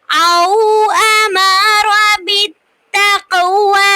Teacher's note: قاف پہ قلقلہ ہے کیونکہ قاف ساکن ہے تو یہاں پہ ہم قلقلہ کریں گے آواز کو تھوڑا سا پلٹیں گے · او پہ واو لین ہو رہی ہے کیونکہ واو ساکن سے پہلے زبر آ رہی ہے